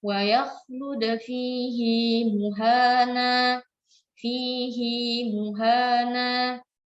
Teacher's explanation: Tapi hanya pada surah Al-Furqan, fihi yang di belakangnya ini sukun, hal dhamir yang di belakangnya sukun, dia tetap dibaca panjang dua harakat